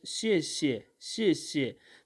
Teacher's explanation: the first word is having fourth tone and the second word is this so it is having a fifth tone a neutral tone